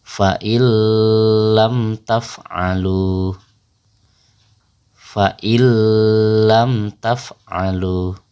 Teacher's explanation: Jadi huruf nun itu kita lebur bacaannya kepada huruf lam. Nunnya hilang tapi lamnya menjadi double atau bertasdid. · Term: idgham bila gunnah